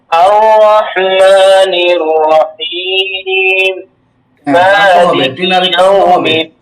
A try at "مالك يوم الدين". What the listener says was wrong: শেষে টান দিতে হবে।